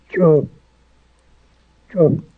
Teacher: it has that little glottle stop right at the end of the ch, but it's one sound